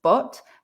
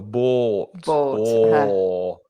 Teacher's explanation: the main difference between but and bought is the length of the vowel